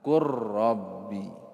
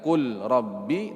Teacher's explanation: karena lam bertemu dengan huruf ra, maka lamnya dimasukkan ke huruf ra